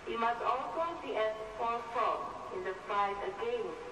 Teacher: you can hear it's all quite um one note it's the same tone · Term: monotone